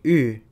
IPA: ᵾː